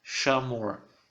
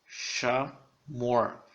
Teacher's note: A sílaba tônica é o mor. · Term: última sílaba